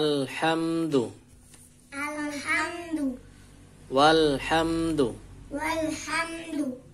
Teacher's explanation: langsung masuk ke huruf lam nya yang sukun